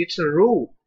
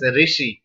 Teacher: people started speaking Ru vowel as Ri